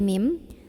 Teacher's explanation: bunyi nun sukun diganti bunyi mim sukun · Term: iklab